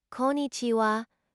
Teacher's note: it's pronounced konnichiwa with the emphasis on the second syllable.